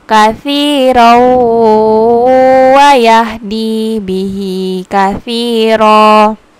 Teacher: Nah, ro-nya ini kan berbaris fathah tanwin bertemu dengan waw. Bacanya tidak katsiron, tapi langsung tasdik ke waw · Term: idgham biguna